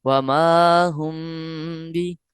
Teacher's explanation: دیکھا تو یہاں اخفاء شفوی کا قاعدہ لگ رہا ہے کیونکہ میم ساکن کے بعد با آیا ہے تو لہذا غنہ کرنا ہے ہم نے